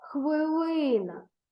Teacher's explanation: будь ласка увагу що слова хвилина пишеться з буквами и і наголос падає на другий склад на звук и